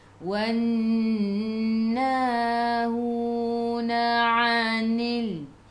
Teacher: Na 2 harakat ada alif mad asli, hu 2 harakat ada waw mad asli.